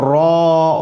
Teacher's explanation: جیسے ہی آپ را ادا کریں گے، منہ گول کریں گے، یہ موٹا حرف ہے، اس کو منہ گول کر کے پڑھا جاتا ہے۔ تو نوک زبان، اور جب منہ گول کریں گے زبان کے پیچھے کا حصہ اٹھے گا اور یہ حرف ادا ہوتا ہے۔